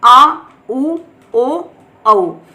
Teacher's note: पश्च स्वर उच्चारण में जीवा का पश्च भाग यानी पीछे का भाग उठता है, आ उ ओ औ। ठीक है, ये चारों जो हैं ये पश्च स्वर है, इनके उच्चारण में जीवा का पीछे का भाग उठता है।